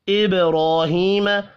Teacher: ابراہیم با ساکن پر قلقلہ کریں گے